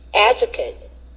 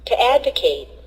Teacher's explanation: MAT in an adjective is completely reduced to mat, whereas in a verb, it's a full A sound, mate.